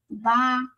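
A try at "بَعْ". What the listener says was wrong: Ba. Make the ayn deeper.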